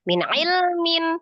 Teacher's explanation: Min ilmin, mim kasroh tanwin bertemu dengan huruf hamzah sama ya, izhar halqi karena huruf hamzah juga sama termasuk huruf yang keluar dari tenggorokan, tepatnya tenggorokan bagian bawah